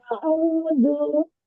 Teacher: Hamzah sedikit dibuka, tahqiqan ditekan.